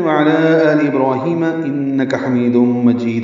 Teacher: انک من مشدد پہ غنہ ہے، کاف باریک ، حمید میں می یا مدہ ہے، دم میں ادغام ناقص